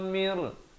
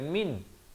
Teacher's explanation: idgham bila gunnah, bukan min tapi mir ruhina